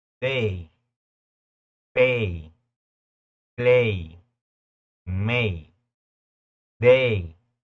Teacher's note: si te das cuenta a y siempre va a sonar e